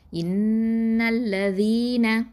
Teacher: இதுக்கு நடுவில் என்ன இருக்குது? ஹம்சத்துல் வசல் இருக்குது, அதை நம்ம உச்சரிக்க மாட்டோம்